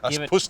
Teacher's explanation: I have to pronounce that second syllable really strongly apparently